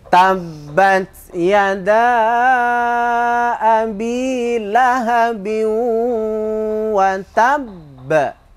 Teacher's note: qalqalah akbar istilahnya ya. Qalqalah kubro juga, tapi cara membacanya itu memang ditekan, mantul, dan juga ditahan